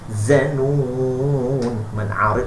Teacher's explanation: Za kena tebal. Za beza dengan zal ujung lidah. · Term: za tebal